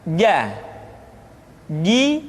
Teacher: huruf ja ja yang dikeluarkan dengan menyentuhkan tengah-tengah lidah dengan langit-langit